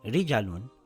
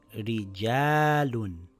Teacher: This reads rijaalun, so it's not rijalun it's rijaalun with a long vowel